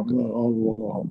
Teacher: Lam lafzul jalalah dibaca tebal.